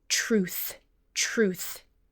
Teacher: When you have TR at the beginning of a syllable, it often sounds almost like CHR